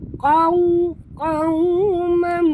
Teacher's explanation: tebal tapi lunak. Jadi muncungkan mulut. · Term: waw sifatnya lin